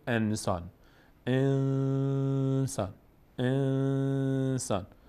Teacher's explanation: می‌کنیم قاعده چهارم اجرا میشه قاعده چهارم چی هست قاعده اخفا مخفی کردن نون رو به شکلی ادا می‌کنیم که گویا از بینی ادا میشه